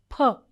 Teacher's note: Pa produces two sounds in the initial position, as in paper, aspirated. Pa is uttered with more force, giving out a puff of air. As I said, puff of air, extra breath force.